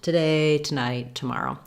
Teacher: words that have TO in the first syllable and are unstressed on that first syllable are going to be that quick schwa sound.